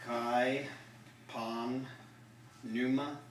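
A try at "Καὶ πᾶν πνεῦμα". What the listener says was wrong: Yep, just pronounce that P.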